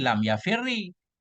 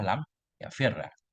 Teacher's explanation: Kemudian ra pertama yang sukun kita idghamkan ke dalam ra yang kedua.